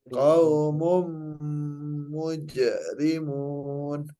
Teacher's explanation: Ya, didengungkan ya mumnya